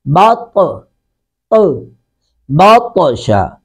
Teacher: اب طا پر، طا ساکن ہے، یہاں پہ قلقلہ کریں گے، طا ساکن پہ قلقلہ کریں گے یعنی طا کی آواز کو لوٹائیں گے، باط، باطشا۔